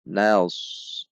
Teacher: memiliki sifat isti'la, diangkat pangkal lidahnya sehingga berbunyi nas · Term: shad